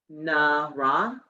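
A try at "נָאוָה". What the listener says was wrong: Nava. That's a vav.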